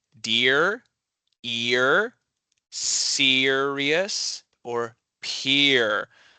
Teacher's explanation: You have to kind of stretch it out a little bit. It goes from e to kind of a soft ear.